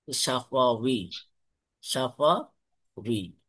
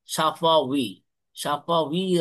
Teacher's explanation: ওয়াও এর মাখরাজ হচ্ছে দুই ঠোঁটের মাঝখান থেকে ওয়াও বের হয়।